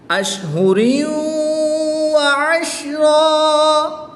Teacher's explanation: تنوین کے بعد واو حرف ملعون میں سے ہے تو یہاں پر ادغام مع الغنہ ہوگا، غنہ کر کے پڑھیں گے. دو زبر کی تنوین کو وقف میں الف مدہ سے تبدیل کر دیں گے.